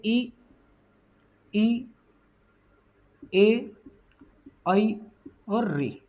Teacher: जब हम उच्चारण करते हैं तो जीभ का सबसे आगे वाला भाग, अग्र भाग जो है वो प्रभावित होता है, वो सबसे ज्यादा क्रिया करता है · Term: अग्र स्वर